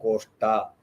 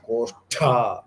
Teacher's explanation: So that koshtha mahaprana, it is not koshta, it is koshtha.